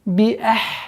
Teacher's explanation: Хамза четко произносим и уходим на гортанный звук с сукуном.